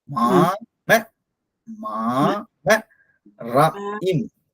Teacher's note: ஒலி எப்படி போகும்னா மேலேந்து போய் அதுக்கப்புறம் கீழே வரும்